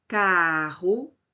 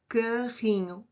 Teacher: Há um fonema que eu acrescento no meio da palavra, portanto é apêntice carro. A vogal aberta, carrinho, vogal fechada é a redução vocálica